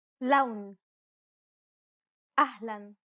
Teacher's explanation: Unlike the English L, the tongue is ever so slightly flatter and straighter in Arabic. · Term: Arabic L sound